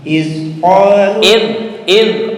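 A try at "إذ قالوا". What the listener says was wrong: Bukan id. Nah, ujung lidah dengan gigi atas.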